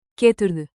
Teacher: Keep a rising question tone on the last syllable.